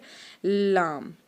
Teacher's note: लाम जो अदा होता है जैसे ता, दाल, त्वा, और वैसे ही हम अदा करेंगे लाम, ठीक है। यानी कि तालु के जो फर्स्ट वाला हिस्सा है उससे अदा होता है, जब उसको ज़बान टच की जाती है